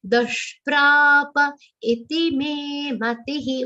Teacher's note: Only pra and me are the long sounds. We have to say those two long. Rest everything should be short, especially matihi.